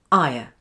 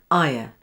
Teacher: your tongue moves to a low and central point with your jaw and lips ending in a relaxed and neutral position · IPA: /aɪə/